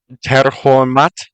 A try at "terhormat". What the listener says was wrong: Okay, pretty close. Forgot to roll the second R. Terhormat.